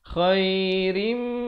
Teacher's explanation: asalnya rin, tapi bila datang mim jadi rim. Terus dengung, masuk beserta dengung 2 harakat.